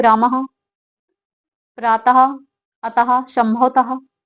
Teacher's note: हकार की ध्वनि, अर्थात हा की ध्वनि आती है विसर्ग का उच्चारण करते समय।